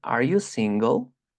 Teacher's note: y pronunciamos una entonación ascendente